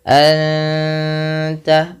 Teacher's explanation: ada bacaan ikhfa hakiki, nun mati bertemu ta, 2 harokat sambil ditahan gunnahnya, sambil ditahan bunyi suara dengungannya.